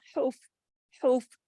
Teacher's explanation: فا کے اوپر جماؤ کے ساتھ پڑھنا ہے، ہلانا نہیں ہے، کرکرا نہیں کرنا